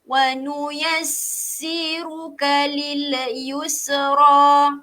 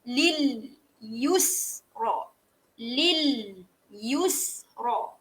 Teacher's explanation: Semua ni huruf lam mati, huruf sin mati. Semua ni tak boleh lantunkan bunyi dia.